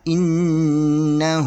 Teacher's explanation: تو یہ نون مشدد ہے، اس کے اوپر 3 کی غیر والی شاد ہے، تو یہ اپنے مخرج میں سختی سے پڑھی جائے گی اور ڈبل پڑھی جائے گی ، اور اس کے اوپر 2 حرکت کے برابر غنہ کریں